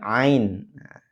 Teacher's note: tempatnya atau makhijul hurufnya itu adalah di tenggorokan bagian tengah